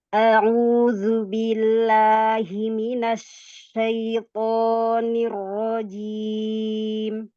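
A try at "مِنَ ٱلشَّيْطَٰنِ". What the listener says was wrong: Minasya, iya, minasya. ujung lidahnya jangan nempel ke bawah ya, jadi jangan keluar celah, suaranya lewat celah, nanti bunyinya kayak sin Umi. Asya, asya, laisa ini tajam, jangan safir. Minasyaitoni, asy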